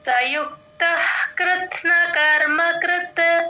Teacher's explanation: కృత్న కర్మ కృత సయుక్తః యుక్త పక్కన విసర్గ యః హెచ్ సౌండ్ అండి క ముందు విసర్గ ఎప్పుడు వచ్చినా విసర్గ సగమే పలుకుతాం